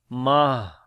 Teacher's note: جب ہا بنے گا تو پھر اس کے اوپر صفت ہمس آ جائے گی، سانس جاری ہوگا